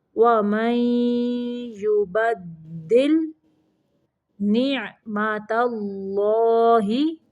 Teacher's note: تا باریک ہے اور اللہ کا لام موٹا پڑھنا ہے